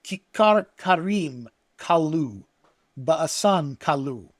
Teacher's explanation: you can hear here this repetition of this hard K and R sounds throughout